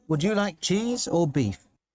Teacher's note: On cheese, your voice goes higher, and on beef, it goes lower. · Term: intonation